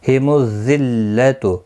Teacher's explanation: اس ذال کو سختی کے ساتھ نہیں پڑھنا ہے، نرمی کے ساتھ پڑھنا ہے. ذلت این، ای یالین ہے، تھوڑا نرمی کے ساتھ کھینچ کر ادا کریں گے، نہ کو کھینچنا نہیں.